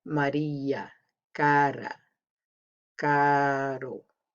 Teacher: It doesn't sound like R. It sounds more like DD or TT, like leather or letter, like a soft R.